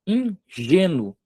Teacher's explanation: Tá vendo que o G eu puxo com a entonação mais forte? Paroxítona.